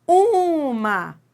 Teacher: O U é que manda na palavra.